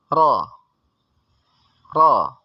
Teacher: ra di sini dibaca dengan getar